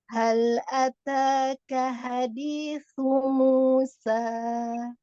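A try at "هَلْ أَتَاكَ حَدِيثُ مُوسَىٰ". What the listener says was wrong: Musa, buka rahangnya. Nggak boleh lemah. Musa. Hal ataka hadithu Musa. Musa.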